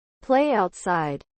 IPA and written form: pleɪ ˌaʊtˈsaɪd (Play outside)